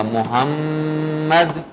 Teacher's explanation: غنہ بھی کرنا ہے نا ساتھ، دال پہ کلکلا بھی ہے